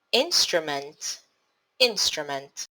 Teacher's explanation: syllables in instrument divide into syllables in stra meant three syllables the stressed syllable in instrument is on in